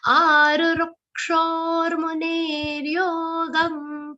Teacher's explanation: Now arurukshor, both the ru sounds are short. Ru. Okay, and the second ru will have a mild aghat of ka.